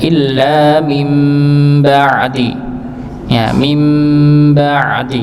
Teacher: di sini nun sukun bertemu dengan ba, maka mengubah nggih, bukan min ba'di tapi mim nggih.